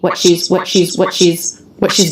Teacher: so what she's again unstressed said quickly stop T